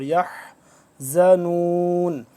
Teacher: حا کو حلق کے اوپر والے درمیان والے حصے سے ادا ہوگا